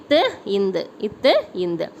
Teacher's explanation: நாவின் நுனி மற்றும் மேல்வாய் பல்லடி வந்து